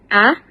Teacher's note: vokal depan, rendah, dan tak bundar